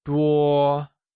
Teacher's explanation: Many translates to 多 and is pronounced using a high-level tone